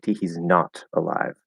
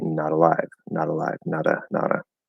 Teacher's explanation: the most common thing without any special emphasis is to flap the d um turn the t into a flap d